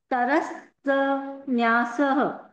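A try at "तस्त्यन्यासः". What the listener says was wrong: तस्त। तरस नहीं, तस्त। स्त है वो। तस्त न्यास है।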